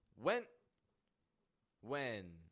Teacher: I'm slightly raising my tone of voice at the ending of the word